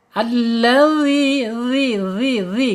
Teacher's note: dza yaitu ujung lidah menyentuh ujung gigi seri. Keluarkan sedikit ya ujungnya ya. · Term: dzal